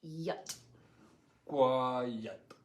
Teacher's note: it's not really the e sound it's more of that sound the schwa sound